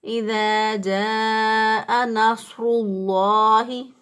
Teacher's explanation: تو اس لیے را کے اوپر چونکہ پیش ہے تو اس لیے را کو موٹا پڑھیں گے